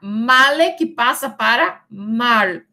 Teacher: de male, esse E final sofre apócope porque essa consoante lateral L pode formar a sílaba com A da sílaba anterior